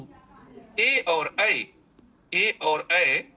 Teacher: ए और ऐ जो स्वर वर्ण है उनका उच्चारण स्थान कंठ और तालु होता है